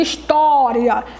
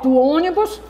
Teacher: história o ó é acentuado com o acento agudo da o som aberto e lá do ônibus da letra O vai dar o som fechado